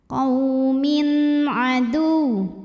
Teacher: Qaw min ada izhar halqi, sebab ada tanwin kasrah menghadapi huruf halqi atau huruf tenggorokan yaitu ain, maka tanwin dibaca dengan jelas